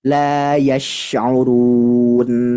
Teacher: nun yang ada di waqaf akhir atau di akhir ayat ini harus ditekan membacanya. Harus jelas. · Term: huruf tawassut